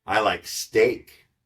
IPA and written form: aɪ laɪk steɪk (I LIKE STEAK)